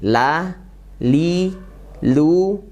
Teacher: lamnya jelas dibaca ya Coba kita ketahui makronya lam gimana yaitu pinggir lidah sampai ke akhirnya dari pinggir sini sampai akhirnya nempel ke gusi atas ya hurufnya bersifat tipis